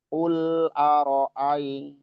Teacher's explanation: Qul lamnya itu sifatnya bainiyah ketika dia disukunkan. Qul aro'ai, jadi nggak usah juga kayak loncat gitu.